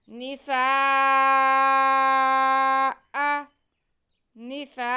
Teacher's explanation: ایک ہی لفظ میں الف مدہ اور ساتھ میں حمزہ آ رہے ہیں تو یہاں پہ مد متصل ہوگی، اسے ہم 4 الف کے برابر کھینچ کے پڑھیں گے